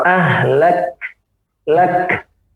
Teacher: Pada sifat getaran suara dia tertahan. Pada sifat anginnya dia keluar. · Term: kafnya